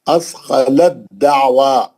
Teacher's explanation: अब ता नहीं पढ़ेंगे अब दाल से ही पढ़ेंगे ता जो है दाल के अंदर चलेगी